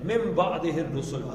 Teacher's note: من بعد من نون ساکن کے بعد آ گیا بعد با. نون ساکن کے بعد بے آ جائے تو نون نہیں پڑھتے بلکہ میم پڑھتے ہیں